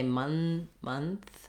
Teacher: say month with my tongue tip already between my teeth. Just close off for the N a little further back on your tongue.